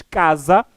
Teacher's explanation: sílabas que são k e za são pronunciadas de forma diferente ao pronunciarmos a primeira sílaba que é K nós aumentamos a tonalidade da voz a intensidade da voz é maior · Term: sílaba tônica